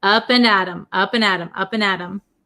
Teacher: We say Adam, Adam. It becomes a flap T, so it sounds like a D sound.